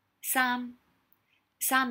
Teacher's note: Sam is technically the high falling.